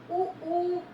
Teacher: आपका जो ऊ बोलते हैं तो दोनों होठ आपके राउंड हो जाते हैं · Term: ओष्ठ